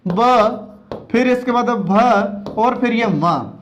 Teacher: इनका उच्चारण करते समय हमारे कंठ में कंपन अधिक होता है, इसलिए इनको सघोष व्यंजन की श्रेणी में शामिल किया गया है।